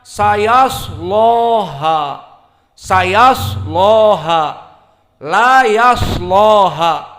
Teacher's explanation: Maka qiraah Wars an Nafi' di sini membaca lam dengan taglid. Lamnya dikuatkan, taglidul lam, karena kaidah bagi kelompok Wars ataupun Imam Wars an Nafi', lam taglid datang setelah shad.